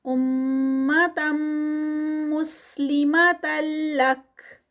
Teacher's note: تم تنوین اور آگے میم مشدد تو یہاں پر ادغام ہو رہا ہے اور یہ ادغام جو ہے وہ ود غنہ ہوگا